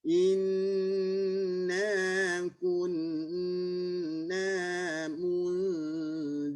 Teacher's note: Buka mulut, ya. Inna kun, jangan gabungkan dengan nun. Kun, ya, ku muncung, nun tarik balik.